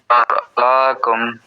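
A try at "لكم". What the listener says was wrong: লিয়ানশুরা লাকুম টান যাতে না হয় খেয়াল রাখতে হবে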